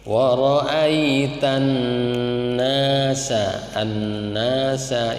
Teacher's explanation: Jadi kalau alif lamnya tidak jelas itu namanya syamsiyah.